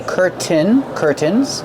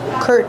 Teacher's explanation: You can pronounce the T and say curtain, curtains, or you can do the stop T, curtain, and then link to the N sound.